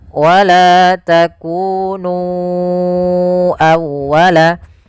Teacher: Maka kita harus memanjangkan nu-nya sepanjang 4 atau 5 harakat. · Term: mad jaiz munfasil